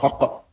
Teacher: حقاقہ، قاف کو قاف میں مدغم کر کے شد لگا کے حق پڑھتے ہیں، حقا، حقا، حقن، اور قاری بھی اس کو تلفظ طالب علموں کو یہی کراتے ہیں کہ اس کو اس طرح تشدید کے ساتھ پڑھو کہ 2 قاف مدغم حالت میں ادا ہوں، حقا۔ ہم پنجابی میں کرتے ہیں حق، اس کو قاف کتاب والے قاف کے ساتھ ہم پڑھتے ہیں، مراد وہی ہوتا ہے، 2 نقطے والا قاف۔